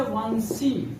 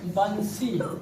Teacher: वा का उच्चारण दंत और ओष्ठ दोनों की सहायता से किया जाता है, अतः इसे क्या कहते हैं, दंतोष्ठ कहते हैं।